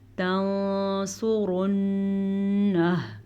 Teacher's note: نون ساکن کے بعد سواد حروف اخفا میں سے ہے تو نون ساکن کو ہم چھپے ہوئے غنے کے ساتھ پڑھیں گے. سواد کو پر پڑھیں گے.